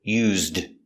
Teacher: the word used by itself is pronounced used with the voice zd